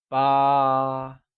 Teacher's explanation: 8 is ba, pronounced with a high level tone